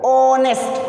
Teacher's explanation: जैसे मैंने यहाँ ऑनेस्ट डाला है, ये कॉन्सोनेंट होकर भी वॉवेल्स का साउंड प्रोड्यूस कर रहा है, क्योंकि यहाँ पर हम एच के प्रोनाउंसिएशन को ओमिट कर रहे हैं, यानी एच जो है एक साइलेंट लेटर है यहाँ पर